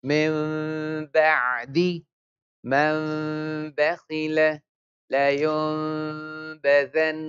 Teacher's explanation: Condition after noon sakin or tanween. If letter ba appears, we change the sound of noon into meme with ghunna. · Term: Iqlab